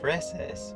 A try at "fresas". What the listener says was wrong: said freses. You're trying to make it sound really close to feces.